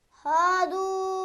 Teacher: पेश के बाद वाव है, उस वाव को थोड़ा सा खींचेंगे